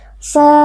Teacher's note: Mad tabi'i karena ada alif yang sebelumnya berharokat fathah, dibaca panjang 2 harokat.